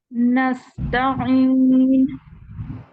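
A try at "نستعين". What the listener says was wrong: गला घूंटी हुई आवाज है, ज्यादा नहीं घूंटे।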